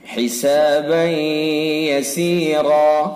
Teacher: فَسَوْفَ يُحَاسَبُ حِسَابًا يَسِيرًا، حسابًا يَسِيرًا با کے اوپر 2 زبر کی تنوین ہے، اور تنوین کے بعد یا واو میم نون میں سے یا ہے، لہذا ادغام ناقص ہوگا، ادغام ناقص بالغنہ، غننے کے ساتھ اس کو پڑھا جائے گا۔ حسابًا یسیرا، را کو پر پڑھیں گے چونکہ را متحرک ہے، را کے اوپر زبر ہے اس لیے را پر پڑھی جائے گی۔